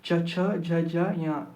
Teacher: च से आएगा च वर्ग। मतलब जितने भी वर्ण च वर्ग में आते हैं वो भी यहां से बोले जाते हैं। कहां से? तालु से बोले जाते हैं।